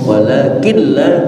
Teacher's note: nun mati ketemu lam idgham, idghamnya bila gunnah atau disebut idgham tam, sempurna maksudnya.